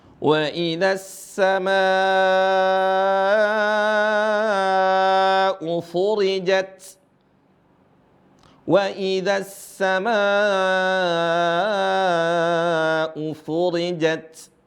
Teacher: Di sini ada mad, ada intonasi panjang 5 harokat, 4 atau 5.